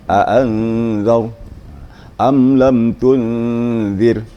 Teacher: Seperti a'anzar gitu. Jadi antara nun dengan zal tu berpadu gitu ya. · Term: ikhfa hakiki